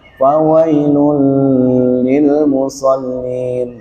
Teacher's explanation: Jadi harus satu ketukan, tidak boleh gunnah atau memanjang seperti idgham bi gunnah.